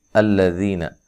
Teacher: لام کو موٹا نہیں پڑھنا، حمزہ کو تحقیق سے پڑھنا ہے